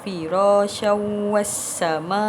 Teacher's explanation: ada tanwin bertemu dengan huruf waw di situ. Jadi perlu masukkan ke dalam huruf waw. Tanwin dimasukkan ke dalam huruf waw.